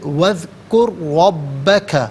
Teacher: را اور با دونوں مشدد ہے، دونوں کو جماع کے ساتھ پڑھیں گے، را پر زبر ہے ربا میں، را کو پر کر کے پڑھا جائے گا